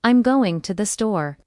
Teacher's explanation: Voice goes down at the end. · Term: Falling intonation